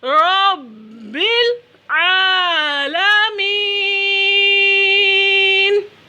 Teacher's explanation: عین کو وسط حلق سے ادا کرنا ہے